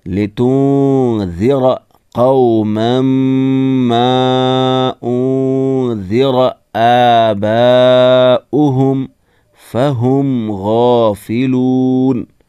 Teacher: نون ساکن کے بعد حروف اخفا میں سے ذال آیا ہے، اس لیے یہاں بھی اخفا ہوگا. نون ساکن کی آواز کو ناک میں چھپائیں گے، نون کو صاف نہیں پڑھا جائے گا.